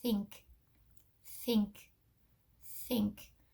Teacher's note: the air is coming over the front of the tongue to make that th sound once we have that we're going to slide the tongue back